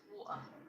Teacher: in some variations of British English, the glottal stop is used in place of a T. So for example, the word water with a glottal T would sound like water. · It's like, for example, wa, and you're about to put the T in, but then you kind of, there's a tension in your throat that just cuts off the sound.